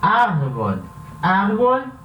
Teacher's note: Árvore, a sílaba tônica é a penúltima, antes da última, então ela é uma palavra llana ou grave e não termina nem com N, nem com S, nem com vogal.